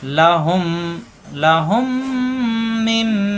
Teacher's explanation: মিম সাকিনের পরে আসছে মিম, এই মিমের তাসদীদ ধরে গুন্না, এই মিম সাকিন পড়া যাবে না, সাকিন তাসদীদ পাশাপাশি, এই জন্য হুম মিলবে মিমের সাথে।